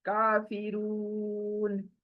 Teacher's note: واو کے پیش کے بعد واو مدہ، مدہ آیا ہے 2 آواز کھینچیں گے